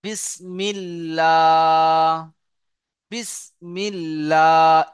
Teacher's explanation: পুর অর্থাৎ ল পড়তে হয়। আর আল্লাহ শব্দের লাম মুসাদ্দাদের আগে যদি জের আসে, জের, তাহলে আল্লাহ শব্দের লামকে বারিক অর্থাৎ লা পড়তে হয়, বারিক অর্থাৎ লা পড়তে হয়।